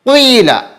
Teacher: ہونٹ کو گول کر کے زیر کے ساتھ پڑھیں گے، پیش نہیں پڑھنا ہے، صرف ہونٹ کو گول کریں گے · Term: یائے مشممہ بالضم